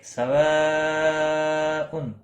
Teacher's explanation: مد متصل ہے چار الف کے برابر کھینچ کر پڑھیں گے